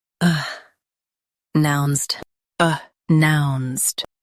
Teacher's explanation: Stress nounced and keep uh soft.